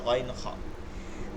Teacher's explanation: 2 নম্বর মাখরাজ হলকের মধ্যখান থেকে আইন হা। 3 নম্বর মাখরাজ হলকের শেষ হইতে